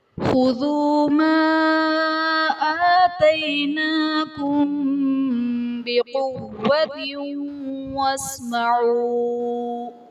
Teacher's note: آتیناکم بقوۃ میں میم ساکن کے بعد حرف با تو یہاں پر اخفاء شفوی کا قاعدہ ہوگا، یعنی میم ساکن میں ہم غنہ کر کے پڑھیں گے